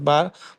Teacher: ইয়া মাদ্দাকে সর্বদা এক আলিফ পরিমাণ টান দিয়ে পড়তে হয়।